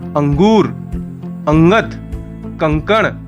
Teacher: अनुस्वार का चिन्ह है बिंदु। यह स्वर के बाद आने वाला व्यंजन है जिसकी ध्वनि नाक से निकलती है। जैसे अंगूर, अंगत, कंकण आदि।